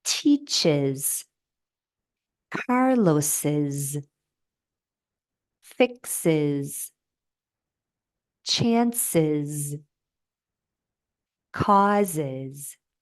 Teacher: word ends in a hissing sound, the S or ES will sound like is. Hissing sounds include S, Z, Sh, Zh, Ch, and J.